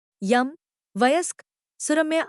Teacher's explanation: उठकर कठोर तालो के बहुत पास पहुंच जाता है यह सघोष आवृत्ता का तालव्य ध्वनि है · यह सघोष अवृत्ताकार तालव्य ध्वनि है।